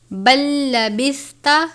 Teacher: لام ساکن کے بعد لام مشدد ہے، ہم لام ساکن کو لام مشدد کی طرح ادا کریں گے، یعنی ان دونوں حروف کو الگ الگ نہیں ادا کرنا، لام ساکن کو لام مشدد کی طرح ادا کریں گے۔